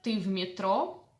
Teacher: A general question, rising intonation.